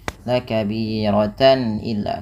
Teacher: Suara tannya dibaca dengan jelas karena adanya tanwin bertemu dengan huruf hamzah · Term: izhar halqi